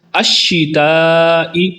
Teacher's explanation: الشتاء پر مد متصل ہے جس کو لمبا کر کے پڑھیں گے